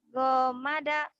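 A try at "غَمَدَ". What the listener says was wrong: Gak ada yang panjang. Gomada. Gomada.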